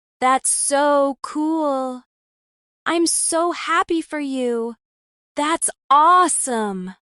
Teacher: These sound natural because the voice goes up, not flat. It's musical, expressive, warm.